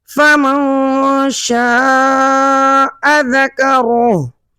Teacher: یہاں پر نون ساکن کے فوراً بعد حروف اخفا میں سے شین آ رہا ہے، تو یہاں اخفا کا قاعدہ ہوگا